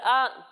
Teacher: جب ہم حمزہ کی ادائیگی کریں گے تو اس کی ادائیگی حلق کے نچلے حصے سے ہوگی